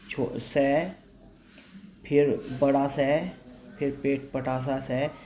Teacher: हवा निकलती है, गर्म हवा निकलती है, लेकिन कंपन नहीं होता है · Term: अघोष